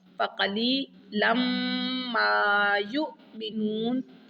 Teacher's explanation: میم مشدد پر غنہ ہوگا